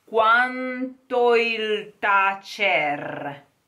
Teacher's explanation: this N is nasalized